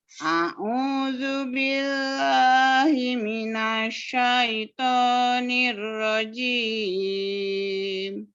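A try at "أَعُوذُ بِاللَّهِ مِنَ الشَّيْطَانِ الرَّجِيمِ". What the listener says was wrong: Ainnya. A'u. Ingat ditekan huruf ain.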